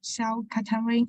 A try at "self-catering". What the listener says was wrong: This phrase here is pronounced self-catering. Okay, in this case, the A is pronounced like an A sound, not A as in cat. So it's not self-catering, it is self-catering.